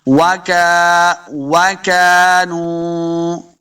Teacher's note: واو کو جب پڑھیں گے دونوں ہونٹ گول کرنے ہیں. وَكَانُوا، کاف کو موٹا نہیں کریں گے، نون پیش واو، نو واو مدہ ہے، اس کو دو حرکات لمحہ کرنا ہے.